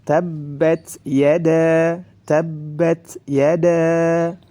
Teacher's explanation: Jadi nafas suaranya terputus ketika membaca huruf ta. Tabbat, ya, nafasnya jalan, suaranya terputus. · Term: sifat syiddah